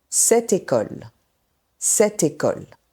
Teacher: Le T de cette glisse vers le mot école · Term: enchaînements consonantiques